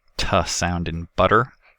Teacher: Intervocalically, alveolar stops and the alveolar nasal can be flapped, where a very brief closure is made. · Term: alveolar flap